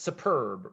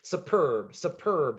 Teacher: superb superb second syllable is stressed